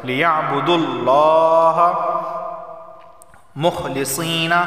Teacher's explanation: لفظ اللہ سے پہلے پیش آیا ہے تو لفظ اللہ کو موٹا پڑھا جائے گا